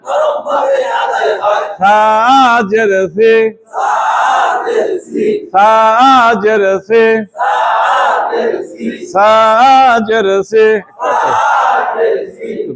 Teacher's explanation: সাজেন জিব্বার আগা, সাজেন সামনে উপরে, দাঁতের আগা থেকে নরম ভাবে আদায় হয়